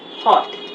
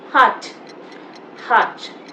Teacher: in American English, you'll notice that vowel is mostly stretched